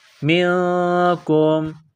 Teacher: نون ساکن کے بعد کاف ہے، حروف اخفا ہے، غنہ کریں گے